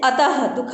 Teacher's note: विसर्ग का प्रयोग उच्चारण के समय व्यंजन के साथ ह की ध्वनि देता है